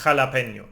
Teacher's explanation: You are scraping the throat.